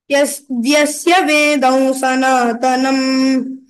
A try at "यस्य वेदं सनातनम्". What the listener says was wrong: यस्य न you said vyasya